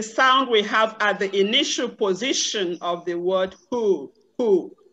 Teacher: it is the sound that comes freely there is no obstruction anywhere it is pronounced at the open glottis within the mouth your mouth will be open and then you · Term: glottal fricative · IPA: /h/